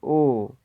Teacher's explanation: कंठ से आवाज निकल रही, ओ कंठोष्ठ है।